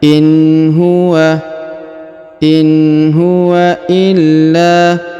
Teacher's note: huruf la ditahan dan ditekan lalu dipanjangkan 2 harokat karena di depannya terdapat alif